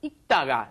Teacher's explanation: There's no L sound. You just say 읽다가, as in when you just pronounce the basic form.